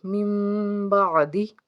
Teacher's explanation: من بعدہ، یہاں پہ اقلاب کا قاعدہ ہے، یعنی کہ میم ساکن کے بعد آپ کو ایک چھوٹی سی میم نظر آ رہی ہے اور اس کے بعد اگر با ہو تو پھر یہاں پہ غنہ ہوگا اور ہم نون کی آواز نہیں پڑھیں گے بلکہ میم کی آواز پڑھیں گے